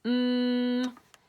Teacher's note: you use the air from your nose and you push it out when you make the sound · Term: nosy neighbors